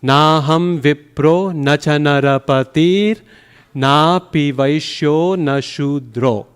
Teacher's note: See the first 4 long syllables and then the many short ones.